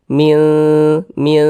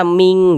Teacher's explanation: tengah-tengah tidak dekat juga tidak jauh di tengah-tengah maka dikatakan ausat maka cara membacanya disamarkan didengungkan bunyi nunnya dibaca samar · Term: ikhfa Hakiki ausat